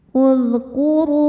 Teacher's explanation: Huruf ro dibunyikan secara tafkhim sebab roisnya di atas yaitu baris dhammah. Maka ro kita baca dengan tebal.